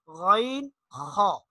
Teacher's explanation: حلق کا منہ کی طرف والا جو حصہ ہے اس سے یہ 2 حروف ادا ہوتے ہیں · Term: ادنی حلق